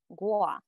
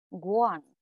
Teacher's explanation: me or i is gua when it's nasalized guan that means we in plural forms